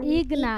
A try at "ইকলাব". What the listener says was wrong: ইকলাব, ইকলাব, ইকলাব,